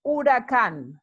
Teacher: or seviento a hurricane is an oracan notice the accent here so we place the emphasis on the last syllable